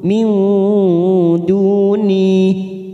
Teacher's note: nun sukun bertemu dal, ikfa hakiki, kita samarkan 3 ketuk.